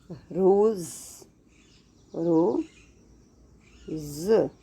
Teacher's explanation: ये हमारा ज तालु के साथ नहीं टच होगा, हल्की सी जीभ का स्पर्श होगा। अदरवाइज जब ज बोलते हैं ज तो पूरी जीभ जो है तालु के साथ टच करती है।